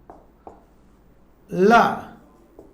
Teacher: जिह्वा के बगल से बोले जाने वाले वर्ण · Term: पार्श्विक वर्ण